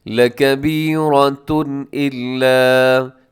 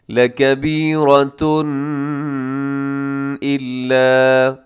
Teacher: حمزہ حروف حلقی میں سے ہے تو یہاں پر اظہار کریں گے، غنہ نہیں کریں گے